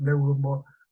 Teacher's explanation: la vocal cerrada, la I solita es tónica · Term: hiato acentual